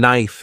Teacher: knife is pronounced without the K sound